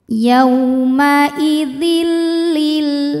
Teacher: cara membacanya tanwin dileburkan ke lam Dil tidak disertai dengungan Jadi cukup ditekan saja jangan sampai ditahan